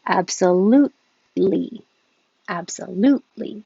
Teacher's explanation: You don't release that T, your tongue goes to the T position, absolute. And it's the same as the L position, so you just hold it there, absolutely.